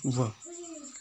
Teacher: वो दांतों और होठों के उच्चारण के रूप में बोला जाता है, इसलिए इसका नामकरण रखा गया है दंतोष्ठ।